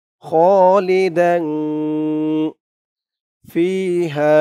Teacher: ফি এক আলিফ টান, জেরের পরে ইয়া সাকিন।